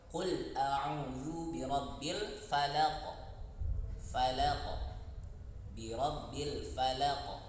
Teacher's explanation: Karena sifat qalqalahnya, sifat pantulannya itu lebih besar jika dibandingkan dengan yang sugro. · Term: qalqalah kubro